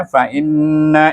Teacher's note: in suku kata in dibaca dengan wajib gunnah dua harakat